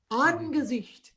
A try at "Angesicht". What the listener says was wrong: You must pronounce the N, Angesicht.